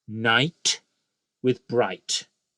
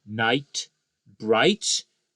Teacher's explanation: the vowel sound is the same the same diphthong in each case and we end with the t consonant sound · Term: perfect rhyme